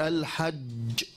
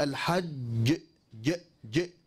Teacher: الجيم إلصاق وسط اللسان كامل · خروج الجيم ممزوجة يعني مخلوطة بالشين نعم مخلوطة بالشين وهذا سببه عدم إحكام إلصاق وسط اللسان بالحنك الأعلى فيؤدي هذا الخطأ لانتشار الصوت بين وسط اللسان والحنك الأعلى فيشبه ذلك صفة التفشي في الشين في الشين الفرق بين الجيم والشين ما هو يا عباد الله؟